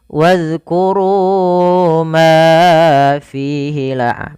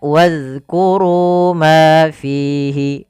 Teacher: Antara ru, ma dan fi harus sama mad tabi'inya. Jangan dibedakan.